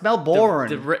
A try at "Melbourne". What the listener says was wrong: The R is irrelevant. It's silent and irrelevant.